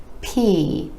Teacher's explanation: it's made with a tiny puff of air being released P you want to make sure you have that air puff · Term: air puff sounds